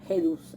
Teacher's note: este sonido de la sibilante más la vau inicial, que va a producir entonces como forma final una aspiración